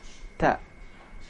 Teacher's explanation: Cara mengucapkan huruf ta, lidah tidak boleh dikeluarkan. Cara mengucapkan huruf ta ini, ujung lidah menempel di belakang gusi atas.